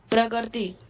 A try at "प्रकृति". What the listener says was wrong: नहीं, प्रकृति। हाँ, जो जिसको आप गे बोल रहे हो ना, वो गे नहीं है, वो कै है बेटा।